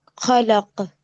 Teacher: وقف کرنے کی صورت میں قلقلہ کبرا ہوگا